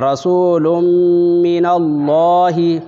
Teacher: اب دو پیش کو میم سے ادغام کرے گے گنہ کے ساتھ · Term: ادغام ناقص